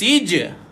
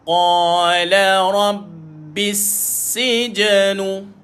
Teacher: Dan dia terus pergi pada huruf jim yang bertanda sukun, maka berlakulah sifat qalqalah dekat situ, iaitu melantun. Jadi lantunan kecil tuan-puan, maka dibaca dengan lantunan yang kecil, maka sij.